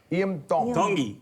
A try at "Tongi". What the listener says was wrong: Tongi. You pronounce the T's like a D in the Tongan culture.